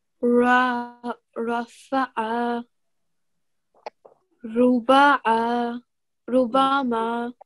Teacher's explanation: So ra is not one of the thick letters, but when it has a fatha and dhamma on it, it's going to be pronounced with a thick and heavy sound